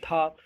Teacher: दंत ऊपरी दांतों के निकट से, तो जो ऊपरी दांतों के निकट से उच्चारण स्थान बोला जाए तो उसको हम बोलते हैं दंत बोलते हैं।